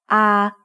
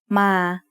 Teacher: a long vowel that makes the sound ah like the a in Father